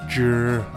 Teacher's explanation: sounds like the letter J in journey, however with the tip of the tongue curled further back